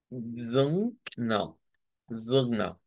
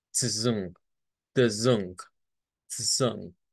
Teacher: Se tiene que escuchar esa de la parte nasal de esta consonante, que recordemos, esta es la NG.